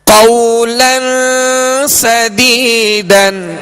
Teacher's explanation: قولن، لام پر دو زبر کی تنوین ہے، آگے سین ہے، سین حروف اخفا میں سے ہے، لہذا یہاں پر غنہ کر کے پڑھیں گے